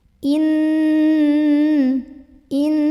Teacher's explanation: dan hurufnya bertemunya dimana huruf pertama sukun Huruf kedua ada harokatnya bacanya sama aja masuk juga disertai dengan dengungan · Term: Idgham Mutamatsilain